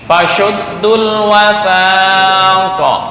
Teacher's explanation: shin tuh sifatnya tafashi ya. Apa tafashi itu? Angin menyebar merata.